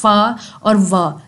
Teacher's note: हैं कि जब आपके मुंह के अंदर हवा रुकती है और आपका जो लोअर लिप है वो आपके अपर वाले यानी कि फ्रंट के दांत बनी टीथ जो है उनसे टकराते है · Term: लब यो डेंटल